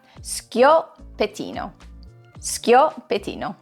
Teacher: So first off, the S-C-H-I at the beginning doesn't make a sh sound, as many of us Americans might intuitively think. Instead, it makes a skyo sound. And once you get past that, the pettino follows pretty easily.